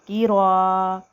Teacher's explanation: ہم الف کو ایک الف کے برابر کھینچ کر پڑھیں گے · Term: الف مدہ